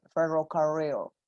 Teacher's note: la lengua no pega en el paladar duro sino que pega en el paladar blando ahí atrás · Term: la r del inglés